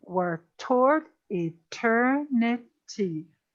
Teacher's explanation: if we have six syllables our stress is going to be on syllable two four and six